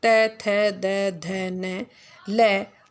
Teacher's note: त वर्ग त थ द ध न ल और दंत्य स का उच्चारण किससे होता है? दंत से होता है।